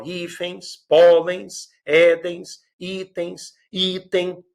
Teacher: todas elas, a sílaba mais forte é a penúltima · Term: paroxítonas